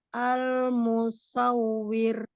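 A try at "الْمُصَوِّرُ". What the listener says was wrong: Iya, bagus.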